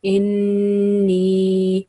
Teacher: Like over here, it's noon mushaddad. We have 2 second nasal sound. We keep sound in our nose pipe for 2 seconds, so it will be inni.